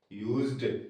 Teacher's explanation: क्लेम्ड किल्ड सिर्फ ड उच्चारित होगा एटी का बज्ड यूज्ड देखो एस से ज बन रहा है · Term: ज साउंड